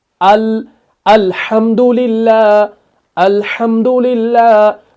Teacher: अल को हम simple short तरीके से अदा कर रहे हैं, बुलंदी के साथ अदा कर रहे हैं, खींच नहीं रहे हैं इसको